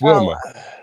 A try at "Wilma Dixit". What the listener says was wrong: It's Wilma Dixit. No, you're putting the pause. You're saying it as different words. It's 2 different words, not 4. Wilma